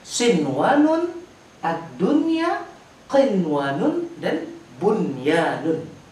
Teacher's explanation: Ada nun mati, setelahnya huruf wa, huruf idgham bigunah yang seharusnya sinwanun, tapi dibaca tidak dengan dengungan. Sinwanun harus dibaca tanpa dengungan. Ada 4 kata ini di Al-Quran, dan ini tidak dibaca dengan dengungan.